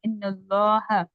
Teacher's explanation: लफ्ज अल्लाह के लाम से पहले जबर आ रहा है, इसलिए लफ्ज अल्लाह को यहाँ पर मोटा पढ़ा जाएगा। अगर लफ्ज अल्लाह के लाम से पहले जबरिया पेश हो तो मोटा पढ़ेंगे, और अगर जेर हो तो बारीक पढ़ेंगे, इन्नल्लाह।